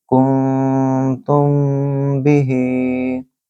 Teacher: کنتم بہ، یہاں نون ساکن کے بعد تا ہے، اخفاء کریں گے، اور میم ساکن کے بعد با ہے جو کہ اخفاء شفوی کا میم کا قاعدہ ہے، تو اس کو بولیں گے کنتم कुंतुम बिही, नून के ऊपर भी गुन्ना करेंगे और मीम के ऊपर भी